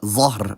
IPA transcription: zˤɑhr